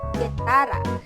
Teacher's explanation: ang ibabaw ng dulong dila ay dumidiit sa velum o malambot na bahagi ng ngalangala. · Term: pangalangala